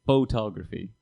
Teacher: you just say photography with that incredible emphasis on the first syllable